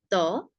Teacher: ত অল্প প্রাণ, কম জোর দিয়ে বলবো।